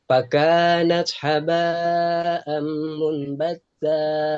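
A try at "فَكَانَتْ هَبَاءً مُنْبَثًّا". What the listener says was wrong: Monnya jadi iklab ya, mom jadi bunyi M. Fakanat haba'am munbassa.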